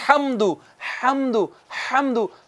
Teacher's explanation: हा जो है हाजरीन किराम ये अदा होता है वस्ते हलक से